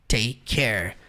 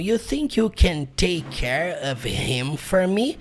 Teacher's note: Você vai juntar take com care claramente e vai pronunciar take care.